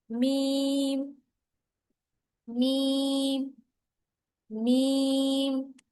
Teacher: با مضبوطی سے با. اور میم جو ہے ہونٹوں کے باہر کے جو خشک حصے ہیں نا ان کو ملانے سے.